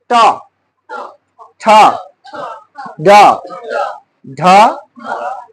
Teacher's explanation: জিহ্বার ডগা মূর্ধাকে স্পর্শ করে যে সকল ধ্বনি উচ্চারণ করে এদেরকে বলা হয় মূর্ধান্য ধ্বনি